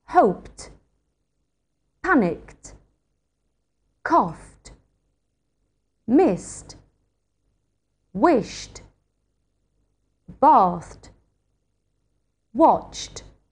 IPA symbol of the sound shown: t